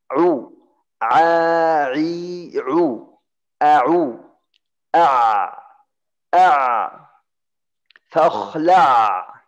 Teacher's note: Dari tenggorokan tapi di atas hamzah. Tengah tenggorokan. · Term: huruf ain